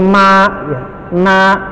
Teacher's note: Dan huruf nun dan mim memang huruf yang dia sifatnya rongga hidung. Nyebutin ma, ya, na, itu harus didorong ke rongga hidung.